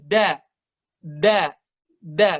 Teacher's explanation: lidahnya itu lebih ke depan lagi daripada biasanya